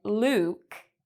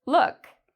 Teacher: Sometimes, like in: Luke, it's a long vowel sound; whereas in this word: look, it's a short vowel sound.